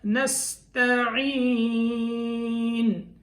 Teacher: اس کے بعد وَإِيَّاكَ نَسْتَعِينُ، وَإِيَّاكَ نَسْتَعِينُ، نستعین، ایا کا اسی طرح پڑھنا ہے جیسے پہلے بتایا، نستعین، یہ سین کی ادائیگی صحیح کرنی ہے، یہ کہیں صاد میں نہ چلی جائے، ثا میں نہ چلی جائے، یعنی سین کو ثا میں یا صاد میں نہیں بدلنا، سین باریک لفظ ہے